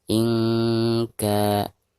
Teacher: Maka cara membaca nun sukunnya itu harus disamarkan disertai dengan dengung · Ketika membaca ka-nya dipanjangkan 2 harokat. Ada harkat fathah kaf berhadapan dengan alif sukun.